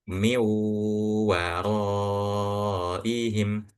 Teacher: langsung masuk ke huruf wau dan bacanya pun dengan ghunah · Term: idgham